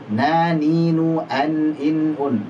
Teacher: Jadi non makhrajnya di ujung lidah bertemu dengan gusi gigi seri atas. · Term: huruf non